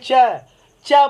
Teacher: जैसे आप च बोल कर देखिए, बोलिए च बोलेंगे तो आपकी जीभ जो है तालू से टकराएगी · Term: स्पर्श व्यंजन